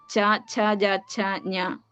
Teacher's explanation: കണ്ഠം കഴിഞ്ഞിട്ടുള്ള താലു നമ്മൾ അണ്ണാക്ക് എന്നൊക്കെ പറയുന്ന സ്ഥാനമാണ് അതിന്ന് പുറപ്പെടുന്ന അക്ഷരങ്ങളാണ് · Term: താലവ്യം